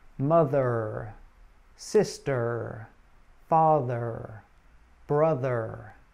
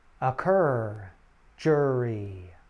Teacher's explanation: it is a mid-central vowel like the uh vowel sound and your tongue curls back slightly like in the r consonant sound but to be clear er is a single sound [Music] when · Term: er sound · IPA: /ər/